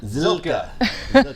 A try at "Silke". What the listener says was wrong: You said Silky, and I'm not Silky.